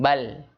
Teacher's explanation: Jadi huruf lam itu memiliki sifat di antara syiddah dan rokhawah, yaitu namanya at-tawasut.